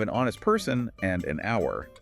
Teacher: because the initial H is silent, meaning the word begins with a vowel sound. And conversely, we use a before a consonant sound, even if the letter itself is a vowel.